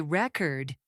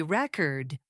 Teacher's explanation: When I say record with stress on the first syllable, I mean the noun, like a file or document. But when I say record with stress on the second syllable, I mean the verb.